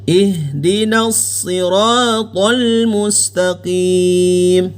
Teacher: Yang tepat adalah H ini keluar dari pangkal tenggorokan. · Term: huruf H